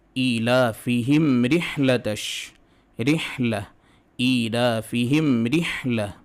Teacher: ناک میں میم کے لیے میم کے مخرج تک آواز جائے گی اور گزر جائے گی۔ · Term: اظہار